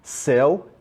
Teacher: céu é o ditongo aberto